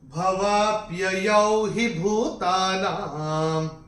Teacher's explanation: ना के ऊपर जो अनुस्वार आ रहा है वो चरण की समाप्ति पे आ रहा है, तो इसका उच्चारण केवल और केवल म ही होगा। भवाप्ययौ हि भूतानां, ये ऐसे करके आएगा।